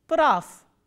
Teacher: v is again a voiced consonant which will be pronounced as its voiceless counterpart, which is f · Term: devoicing of the final consonants